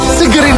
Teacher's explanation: kata segar itu merupakan suatu perubahan fonem A menjadi E. Nah, jadi kata yang benar yaitu adalah segar.